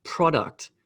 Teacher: pro gets this the emphasis and duct gets the smaller emphasis